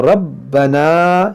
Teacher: रब्बना इन्नी अस्कंतु मिन, देखिए यहाँ पर रब्बना, रा को पुर पढ़ेंगे, मोटा पढ़ेंगे, बा पर तशदीद है तो इसको खूब जमाव के साथ पढ़ेंगे